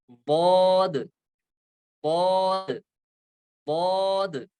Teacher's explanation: तो जब ये हिस्सा हम लगाएंगे, ये लगाना है ऊपर के मोलर्स, जो ऊपर के विजडम टीथ है, ऊपर के धाड़ जो है, इनके साथ ये जुबान की करवट लगेगी, तो वहां से अदा होगा बौद, बौद, बौद।